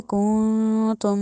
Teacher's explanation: नाक में आवाज़ 2 दफ़ा जा रही है, नून में भी और मीम में भी